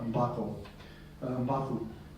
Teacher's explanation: another assimilation change, by the way, there of vowels, the o and u becoming both u